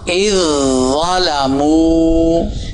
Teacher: جزم والا تشدید والے میں مدغم ہوگا، چونکہ وہ مشدد ہے